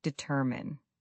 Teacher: The word determine has the stress on the second syllable. Determine. Many learners put it on the first or last syllable, but it's determine.